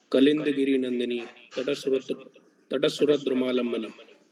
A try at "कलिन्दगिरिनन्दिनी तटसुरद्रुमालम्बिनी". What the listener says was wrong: तटस्सुर हो रहा है, तटस्सुर नहीं होगा, तटसुरद्रुमालंबिनी। देखो द्वित्व कहाँ करना है, गलत जगह कर रहे हो, स पे द्वित्व नहीं करना है ना, ये द पे द्वित्व जैसा कुछ करना है, द्वित्व नहीं करना है एग्जैक्टली, उठा के बोलना है। कलिंदगिरी नंदिनी तटसुरद्रुमालंबिनी, तटसुरद्रुमालंबिनी, सॉफ्टली आएगा तटसुर तक,